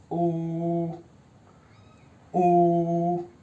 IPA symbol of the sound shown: u: